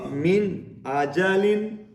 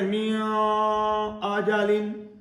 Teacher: لہٰذا یہاں اظہار ہو رہا ہے. یہاں غنہ نہیں کریں گے. نون کو ظاہر کر کے پڑھیں گے.